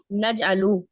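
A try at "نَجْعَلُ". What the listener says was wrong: नजअलू आखिर में पेश भी है, वो बोलना है हमने।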